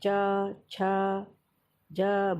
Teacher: इसको बोलेंगे आप, उच्चारण करेंगे तो अपने आप आपको लगेगा कि हाँ बोलने में तालु का स्पर्श हो रहा है। जैसे च, छ, ज बोल के देखिए तो तालु का स्पर्श होता है। तो ये तालव्य व्यंजन या तालु से बोलने जाने वाले वर्ण कहलाते हैं।